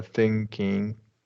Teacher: try not to release that g sound